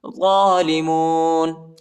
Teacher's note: ضا پر کڑا زبر آیا ہے، اس کو ایک الف کی مقدار تک کھینچیں گے